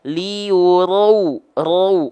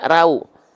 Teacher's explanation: ro ketika fathah dia dibaca dengan keadaan yang tebal makanya yang keluar adalah vokal o